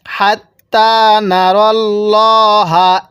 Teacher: তায়ের মধ্যে আমরা এক আলিফ টান দিব খারা জবরের কারণে।